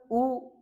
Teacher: जब आप उ का उच्चारण करते हैं तो आपका मुख का आगे का भाग जो होठ होते हैं वह आपके आगे की तरफ जाते हैं। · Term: संवृत स्वर